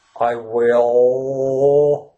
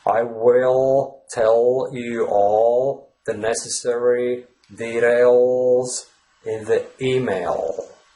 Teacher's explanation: the dark L sound is formed deep in your throat. It's quite the opposite to the light L sound.